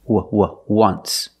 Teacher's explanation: phonetically it's not a vowel phonetically it makes the sound like a w oo once so phonetically the t is between consonants so